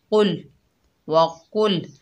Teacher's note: ये कौफ जो है हरूफ मुस्ताला में से है, मोटा पढ़ा जाएगा